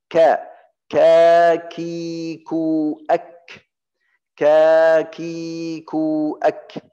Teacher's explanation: Makhraj kaf di belakang lidah setelah makhraj qaf. Yang pertama di lidah dari bawah, yang pertama makhraj qaf, qa, setelah qaf ada kaf.